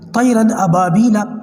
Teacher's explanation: تو جو طیرن کا جو را ہے اس کو لمبا نہیں کرنا، طیرن ایسے نہیں کرنا، طیرن ابابیلا، آواز شروع ہوتے ہی را کی جو ہے وہ ختم ہو گئی، تو یہی چیز یہاں پر سکھائی گئی ہے۔